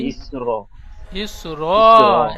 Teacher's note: আয়াতের শেষে থামবো তাই এক জবর বাদ দিয়ে এক আলিফ পরিমাণ টান দিয়ে পড়বো।